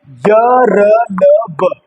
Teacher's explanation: य, र, ल, व है अंतस्थ व्यंजन यह सघोष और अल्पप्राण है